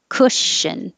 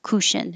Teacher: the vowel is uh as in took and good so don't round your lips